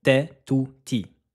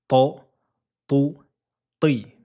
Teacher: incisives supérieures juste au-dessus du palais lettre emphatique donc gonfler l'arrière de la langue · La différence entre la lettre T et la lettre ta, c'est juste l'arrière de la langue qui va gonfler vers le fond du palais. C'est juste l'arrière de la langue qui va lui donner ce son emphatique.